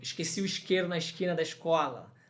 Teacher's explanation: Aquele S pronunciado como sh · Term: S chiado